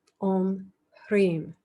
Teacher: Om Ram Raksha, Om Ram Raksha. Om Hrim, a little aspirated H there, Hrim. Not Harim, although you could start to say it like that, but Hrim.